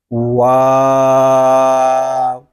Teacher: واو جو ہے یہ دونوں ہونٹوں کی گلائی سے ادا ہوتا ہے، یعنی اس حرف کو ادا کریں گے تو اول آخر ہونٹ جو ہیں یہ گول ہوں گے، واو۔